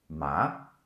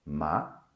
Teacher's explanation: like your voice will go up a bit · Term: Second tone